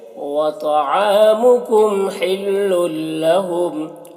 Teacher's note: لل میں ادغام تام ہو رہا ہے، بغیر غنہ کے پڑھیں گے